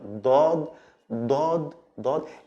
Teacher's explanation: It's also from the throat, like the D, but it's a strong D with open throat